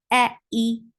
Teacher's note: And Hamza should stay very sharp, very pinchy sound.